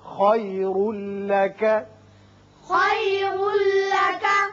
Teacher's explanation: را کے اوپر دو پیش تنوین ہے، بعد میں لام ہے، یہاں ادغام بغیر غنہ ہوگا